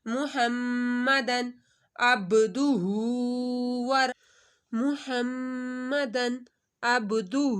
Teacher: دن کے اوپر غنہ نہیں ہوگا ، تنوین کے بعد حروف ہلکی میں سے عین آ رہا